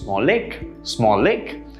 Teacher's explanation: you would drop one of the consonant sounds and combine the 2 sounds. For example, this is pronounced small lake, right? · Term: linking